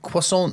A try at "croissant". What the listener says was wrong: I would say you can say the T less,